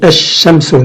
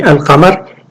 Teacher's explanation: Donc sur le shin, il y a une gémination, il y a une shadda